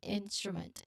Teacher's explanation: you transition from the first part of the word into the combined STR sound that kicks off the next syllable